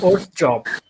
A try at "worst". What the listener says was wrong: Worst না, it's worst. হ্যাঁ, আমাদের বাংলাদেশে ডাব্লিউ কে ও মতন উচ্চারণ করা হয়, এটা একটা ভুল জিনিস। So W actually ডাব্লিউ sound করে না, ওয়া সাউন্ড করে। হ্যাঁ, ডাব্লিউ হচ্ছে ওয়া।